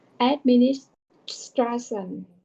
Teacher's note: link the s to the T